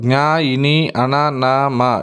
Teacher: ఇవన్నీ కూడా ముక్కు సహాయంతో పలకబడే అక్షరాలు కాబట్టి వీటిని ఏమంటారంటే అనునాసికాలు అంటారు